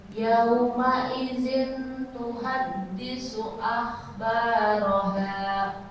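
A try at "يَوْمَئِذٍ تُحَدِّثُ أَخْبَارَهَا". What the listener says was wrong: N-nya disamarkan. Yauma idzin tu, bukan zin tuhadda.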